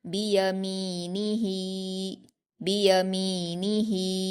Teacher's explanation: हा पर खड़ी ज़ेर है, इसको या मद्दा की तरह दो हरकत खींच कर पढ़ेंगे।